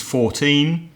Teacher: the stress is on the second syllable for numbers in their teens